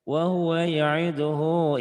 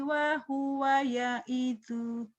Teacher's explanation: Terus wa huwa ya'iduhu kalau diterusin panjang. Kalau dihentikan pendek.